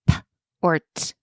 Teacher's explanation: And on the flip side, we can avoid starting with stop sounds like p or t when you're first introducing blending because these don't really glide as naturally as they're just a puff of air. So if a child is already struggling, these more abrupt sounds can make the process a bit more challenging.